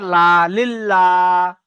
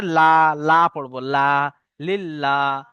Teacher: আল্লাহ শব্দের লাম মুসাদ্দাদের পূর্বে যদি জের হয়, লা পড়তে হবে, অর্থাৎ বারিক